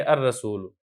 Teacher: رسول ان سے الرسول، یہاں پر بھی یہی بات ہے کہ یہ حروف شمسیہ میں سے ہے را، لہذا ہم لام کو نہیں پڑھیں گے، حمزہ کو براہ راست را کے ساتھ ملا دیں گے